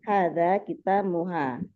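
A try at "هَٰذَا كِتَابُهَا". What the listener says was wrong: Kitabuha, ya bukan muha ya. Ada kitabuha.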